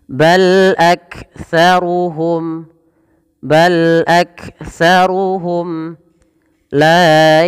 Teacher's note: mim mati bertemu dengan lam maka dibaca dengan bacaan izhar syafawi jelas Suara mimnya